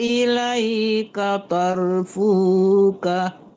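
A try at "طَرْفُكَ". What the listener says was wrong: Matikan kafnya, jangan dipanjangkan fu-nya ya. Ilaika tarafuk. Ya tarfuk. Fuk dimatikan kafnya.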